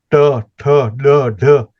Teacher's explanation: એ જીભ તાળવાને અડીને થાય છે